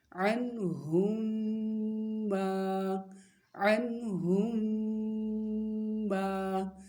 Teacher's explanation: میم پر غنہ بھی ہوگا اور مد اصلی ہے تو لمبا کر کے پڑھیں گے ، اور وقف کی صورت میں بھی لمبا کریں گے، عنہم